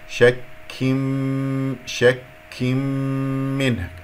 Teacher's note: الكاف كما سمعتم أنه فيها همس